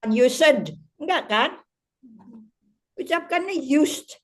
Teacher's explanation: s is voiceless, D-nya itu tidak diucapkan